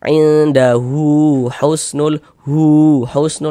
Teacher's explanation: Nah, dibaca hu-nya 2 harokat. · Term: mad silah